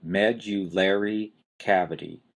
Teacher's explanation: you've got a strong stress on the first syllable med and then you've got a lesser stress on the third syllable